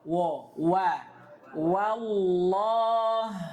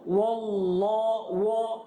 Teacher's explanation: jangan sampai dia tebalkan waw, karena waw sudah disebutkan sifatnya istifal.